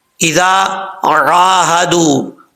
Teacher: عین کے آگے الف ہے، ایک الف کی مقدار لمبا کریں گے